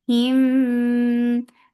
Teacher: E, for kasra, give e sound. Him, this is ikhfa shafawi. You are hiding the sound of meme.